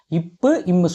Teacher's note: மேலிதலும் கீழதலும் பொருந்துவதால் பிறக்கின்றன